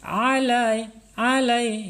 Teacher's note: alai alai ya Enggak boleh ala Awas huruf Ain nih HF Ain makhrajnya di tengah-tengah tenggorokan